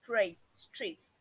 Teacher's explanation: But sometimes also when they come in between words, it could be referred to as a flap because there is a single tap. There is just a single tap on a firmer surface in the alveolar ridge. In words like pray, street, the way the re sounds in pray and street is not the way it sounds in rise, rise, rise.